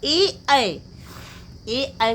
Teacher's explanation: कंठ से भी निकल रहा है ए, और तालव्य तालु भी स्पर्श कर रही है जिह्वा, इसलिए इसे ए और ऐ कहा गया है। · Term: कंठ तालव्य